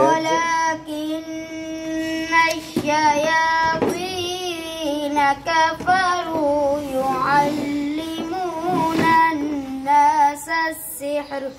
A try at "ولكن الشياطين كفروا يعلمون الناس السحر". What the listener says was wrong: آپ نے سانس بچانے کے لیے نا گننا چھوڑ دیا. يعلمون. يعلمون سے پڑھ لو.